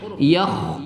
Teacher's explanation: kha itu adalah huruf hamas berangin ya, ada angin berhembus ketika kita melafazkan huruf yakh. Kemudian dia juga termasuk huruf isti'la yakh ya, terangkat anak lidah ke langit-langit ketika.